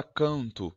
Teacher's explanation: Na palavra canto, o N está após o A, então ele faz um som de ã também. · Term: ressonasal